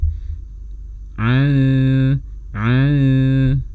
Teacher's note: saat melafalkan dengung tanwin, lidah sudah bertempat di posisi huruf shin, namun jangan ditekan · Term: ikhfa